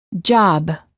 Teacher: stop the airflow by closing our lips therefore is a stop if we quickly open our lips we can then release the stop and say job